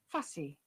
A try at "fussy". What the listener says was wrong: And it is not Z sound, unfortunately. Sai. It is fussy. S. Sa sound, not Z.